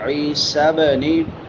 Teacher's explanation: وعیسیٰ بنی عین کے بعد یا مدہ ہے. عیسیٰ بنی با آگئی ہے حروف قلقلہ میں سے. ہلا کے پڑھیں گے.